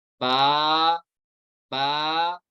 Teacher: मैंने कहा बा को एक अलिफ तक खींचो, तो बा बना हुआ है ना, बा अलिफ जबर बा का, ये अलिफ मदा है, इससे एक अलिफ तक खींचेंगे।